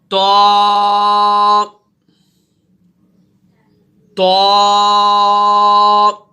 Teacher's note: جب آپ کی زبان کی نوک اوپر کے دانتوں کی جڑوں سے جب یہ زبان لگے گی تو پھر یہ حرف ادا ہوگا تو کا۔ اسے آپ نے موٹا بھی پڑھنا ہے، تو، اور اسے ایک الف کے برابر بھی آپ نے کھینچ کر پڑھنا ہے، تو تو، ٹھیک ہے۔